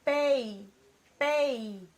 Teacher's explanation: o som da letra I fica o quê? Fraco e rápido, enquanto o som da letra E fica forte, mais demorado, né? Então, eu tenho aqui uma vogal e uma semivogal. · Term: ditongo